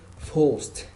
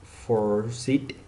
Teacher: Okay, the unvoiced consonant sound like C, CH, F, GH, K, KS, P, S, SH, T, and etc. The ED sound sounds like T and it's not pronounced as an extra.